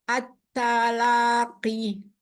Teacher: Tipiskan lagi taknya, kasih hama sedikit.